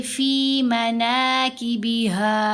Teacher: اگر ہم یہاں وقف کریں تو ہا کے اوپر زبر ہے، ساتھ الف ہے، ایک زبر ہے، تو یہاں اگر ہم نے وقف کرنا ہو تو ہم پڑھیں گے فی مناکبہا، یعنی ہا کو ساکن نہیں کرنا، حرکت کے ساتھ ہی پڑھنا ہے اور لمبا بھی کرنا ہے